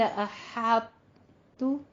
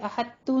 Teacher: طا کو پر پڑھنا ہے لیکن طا کا قلقلہ نہیں ادا کرنا. سمپل اس کی ادائیگی یہی ہے کہ قلقلہ ختم، صرف آپ نے یہ کرنا ہے دونوں کو آپ نے مکمل طور پہ، جیسے احتو نہیں کہنا، احتو نہیں کہنا، تا ہی ادا نہیں کرنا، بلکہ پہلے طا ادا کرنا ہے اور پھر تا ادا کرنا.